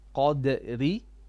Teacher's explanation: This ra now will be flat because of the kasra.